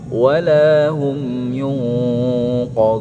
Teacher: Dengungnya pada ikhfa ini tebal.